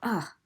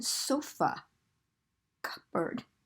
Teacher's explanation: it's called schwa it's this upside down e and it's like someone hits you in the stomach and you go ah okay as in sofa cupboard okay but